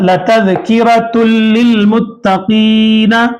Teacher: तनवीन के बाद लाम आ रहा है तो नून की आवाज को लाम में मिला दिए